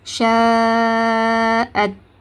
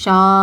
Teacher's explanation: நாலுல இருந்து ஐந்து ஹரக்கத்து நீட்டி ஓதுங்க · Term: பெரிய மத்து